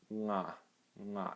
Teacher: It's at the back of your throat. I almost feel like the air is going down into my throat rather than pushing out.